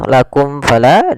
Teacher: izhar suara mimnya tidak boleh ditahan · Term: izhar syafawi